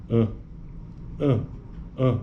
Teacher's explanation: abaixamento do vé palatino né E aí a corrente de ar sobe e penetra na cavidade nasal no nariz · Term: terceira vogal nasal